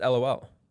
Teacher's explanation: there still is an emphasis on a syllable, regardless of whether you're thinking about it. Like when you're saying LOL, it's on the first L. But I think that's only just because of the like way L's sound.